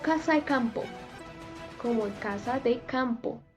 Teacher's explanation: Desaparece la D en la preposición de